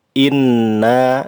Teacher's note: Inna di situ ada huruf nun, di atasnya terdapat tanda tasydid. Ini namanya gunnah, termasuk gunnah asliyah, lamanya 3 harokat.